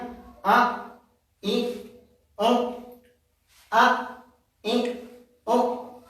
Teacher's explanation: seakan-akan mengucapkan huruf, hampir mengucapkan huruf ain, padahal tidak ada ain sama sekali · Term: bunyi yang keliru